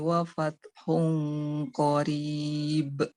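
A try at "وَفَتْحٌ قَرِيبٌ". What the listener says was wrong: Nah, jangan be ya. Jangan ada e-nya.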